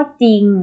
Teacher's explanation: จริงก็คือออกเสียงเฉพาะจอจานนะคะ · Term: คำควบกล้ำไม่แท้